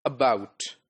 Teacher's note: Schwa in the first syllable, and bout in the second syllable. So, when I pronounce this word about, I'm lower at the lower pitch when I pronounce the first syllable, right?